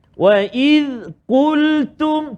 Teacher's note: Maknanya qaf tu tebal, ta tu jangan tebal. Jangan qultum.